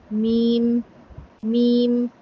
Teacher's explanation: میم بھی دونوں ہونٹوں کو ملانے سے ادا ہوتا ہے، لیکن میم جو ہے وہ ادا ہوتا ہے ہونٹوں کے خشک حصے سے۔ میم، میم۔ جو اندر والا تر حصہ ہوتا ہے نا، اسے تھوڑا سا باہر والے حصے پہ اگر آپ آئیں گے تو آپ کا میم ادا ہوگا۔